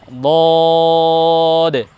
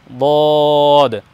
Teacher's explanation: আমরা আরেকবার বলে নিচ্ছি এ বর্ণকে, আমরা শেষ দাঁতের ওপরের মাড়ির দাঁতের শেষের দিক থেকে পাঁচটি দাঁতকে নিব, পাঁচটি দাঁতের সমন্বয়ে আমরা বর্ণটিকে উচ্চারণ করব জিহ্বার এক সাইড লাগিয়ে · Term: দদ বর্ণ